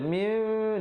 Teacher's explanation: nun mati ditukarkan kepada bunyi mim yang nipis 2 harakat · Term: iqlab